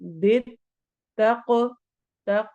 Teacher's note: तक काफ पे कलकला होगा